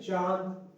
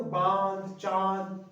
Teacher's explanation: तो नाक से भी निकल ले, मुंह से भी आवाज निकल ले, तो इस ये सारे क्या है, अनुनासिक स्वर है, जिनमें भी ये चंद्रबिंदु आ जाए, इसको चंद्रबिंदु भी कहते हैं।